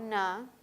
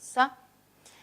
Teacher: Ambos se articulan con el ápice de la lengua que toca la zona posterior a los dientes superiores o a los incisivos superiores. En ambos casos la lengua toca por completo o toca una parte, produce una fricción, pero esa zona en ambos casos es la zona alveolar.